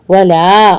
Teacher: مد منفصل ہے، 4 کاؤنٹ کریں